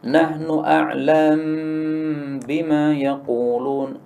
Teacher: Ini mimnya disukun. Kemudian diidghamkan pada ba menjadi nahnu a'lam bima yaqulun. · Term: idgham kabir